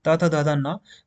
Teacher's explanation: दांतों से बोला जाता है दांत में इसका स्पर्श होता है जीभ का